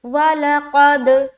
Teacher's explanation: تو یہاں پر یہ جو دیکھیں گے دال جو ہے نا، دال حروف قلقلہ میں سے ایک ہے، تو جب ہم قاف کو دال سے ملائیں گے تو ہم ایکو ساؤنڈ نکالیں گے یا باؤنسنگ ساؤنڈ کہہ لے۔